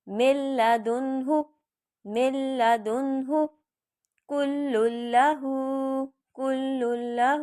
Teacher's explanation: جیسے میں مل لدنہ فوراً پڑھ دوں گی، مل کہہ کے ناک میں نہیں لے کے جاؤں گی آواز کو